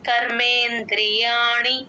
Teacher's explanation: కర్ అని అలా లాగకూడదు ఆ సౌండ్ అర్ అని రాకూడదు కర్మే అంతే సరిపోతుంది